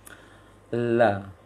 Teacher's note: lam itu adalah ujung sisi lisan kiri sampai kanan atau kanan sampai kiri menempel di gusi gigi seri atas